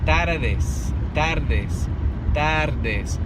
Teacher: But you see how the ere and the de, there's a little space in between where you do hear the tongue kind of flickering